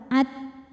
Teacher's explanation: Huruf ta dari segi suara syiddah, suaranya kuat.